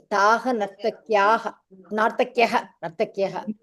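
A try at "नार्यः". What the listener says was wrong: Naryaha. You are holding on to Nartaki still.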